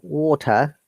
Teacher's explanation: Americans will say most of the cases T as a flap D